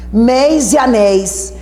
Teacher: Sim, são ditongos abertos tônicos.